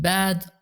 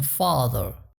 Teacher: Say these two words aloud and notice the difference in that quality of the A. The former is pronounced in the front of the mouth, and the latter is deeper and farther back.